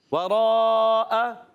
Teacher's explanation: واو کی ادائیگی ہوتی ہیں ہونٹوں کی گولائی سے، واو پر زبر کی حرکت ہے، بغیر کھینچے ادا کریں گے۔ را الف زبر را، را کو پر بھی رکھنا ہے، را پر زبر ہے، اور حرف مدہ کے بعد حمزہ اسی کلمے میں آنے کی وجہ سے ہو جائے گا مد متصل۔